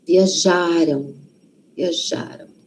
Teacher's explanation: Porque a sílaba forte está antes. Quando a sílaba forte está antes, é um m lá no final, não é um o. · Passado está antes da gente. O passado, então, a sílaba tônica, a sílaba forte, está antes.